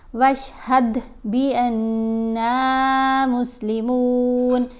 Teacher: دال کے اوپر کلکلا کیا جائے گا